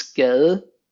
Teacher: the D sound is actually weakened to a soft D